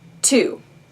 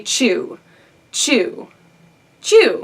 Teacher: this is where to is alveolar and chew is palatal